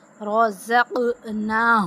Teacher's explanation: अब कौफ पे जो है ना वो कलकला करेंगे।